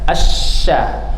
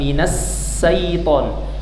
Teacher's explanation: Jadi angin menyebar melalui seluruh permukaan mulut. Nama sifatnya adalah tafasyi. Minasya, asya ya, tengah lidahnya diangkat.